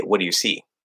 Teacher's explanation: but then if we say what do you see right we go down at the end · We go down at the end. We don't go up. We don't say what do you see, because that sounds like you're questioning the question, as I like to explain it. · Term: sentence final intonation